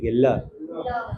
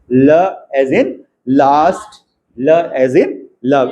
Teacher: The air escapes along the sides of the tongue. हमारी टंग जो है थोड़ी सी ऐसे छोटी होती है, उसकी विड्थ कम होती है। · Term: लेटरल